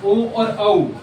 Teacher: ये जो साउंड निकलती है ना ओ और औ ये कंठ से और ओष्ठ से मिलके निकलती है इसलिए इसलिए इसे बोला जाता है कंठोस। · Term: कंठोष्, कंठोष्ठ